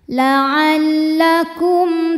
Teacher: mim sukun menghadapi huruf selain mim dan ba yaitu huruf Ta Maka mim sukun dibaca dengan jelas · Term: izhar syafawi